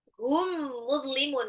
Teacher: mim sukun ketemu mim adalah idgham mimi, idgham mitlain. Ya, ditahan 2 sampai 3 harokat.